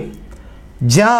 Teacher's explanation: జాకి అల్పప్రాణం నాదాత్మకం తాలవ్యం